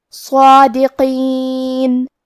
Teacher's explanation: مد الف اپنے پیچھے والے حرف کا حکم لیتا ہے تفخیم میں اور ترقیق میں، لہذا ہمیں صاد کو اور مد الف کو بھی بھاری آواز میں پڑھنا ہے